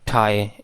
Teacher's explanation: कई लोग ठाए को पढ़ते हैं ठाए, एस्पिरेशन देते हैं